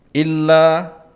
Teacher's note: lam yang bertasydid maka ditahan sebentar untuk memenuhi tasydid. La panjang 2 harokat karena mat tabi'i karena ada alif yang diikuti oleh fathah.